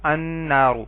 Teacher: نون حروف شمسی میں سے ہے تو ال کا لام نہیں پڑھا گیا